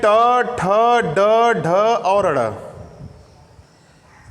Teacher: इनको बोलते समय हमारी जीभ जो होती है वो मुड़ जाती है, इसलिए इसको मूर्धा बोलते हैं। मुड़ना, मूर्धा का मतलब मुड़ना, जीभ का मुड़ना, और जीभ का मुड़ना मूर्धा है।